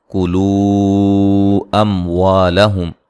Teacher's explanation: حمزہ کو جھٹکے سے ادا کریں گے. کلو اموالہم یہ جو مد ہو رہی ہے یہ مد جائز ہے.